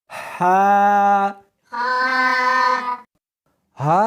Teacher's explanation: اس کو حلق میں سے نکالنا ہے اور ساتھ میں ہوا بھی ہونی چاہیے۔ ہا نہیں پڑھنی بلکہ اس کو حلق میں سے نکالنا ہے، سینے میں سے نہیں نکالنا۔